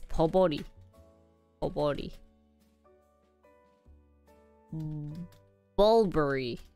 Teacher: You do want to stress on the first syllable